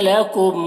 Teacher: लकुम के मीम में इजहार शफवी हो रहा है, इस मीम को जल्द पढ़ना है।